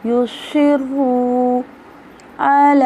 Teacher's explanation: یسرو، اب دیکھیے را مشدد ہے، موٹا پڑا جا رہا ہے، سواد میں موٹا پڑا جا رہا ہے اور سواد میں سیٹی کی ساؤنڈ ہے ، جیسے یسرو علی، عین گلے کے درمیان سے ادا کرنا · عین گلے کے درمیان سے ادا کرنا ہے ، لام پہ کھڑی زبر ہے، ایک الف کے برابر لمبا